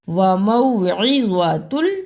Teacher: عین کی جگہ پر حمزہ کی آواز اور زوا کی جگہ پہ زا کی آواز نہیں آنی چاہیے